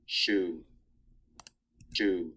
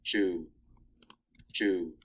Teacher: So what I've tried to create here is a continuum ranging from a fricative to an affricate